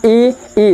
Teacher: जैसे देखेंगे ई, अगर हमने बोला ई, तो आपको क्या, जीभ की सहायता से, ये जीभ के आगे वाले भाग से, अगला भाग जो जीभ का है उसके सहारे से ये स्वर निकलते हैं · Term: अग्र स्वर